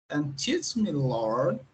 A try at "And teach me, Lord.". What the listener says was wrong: Lord, tá vendo esse R? Boa pronúncia. Bacana.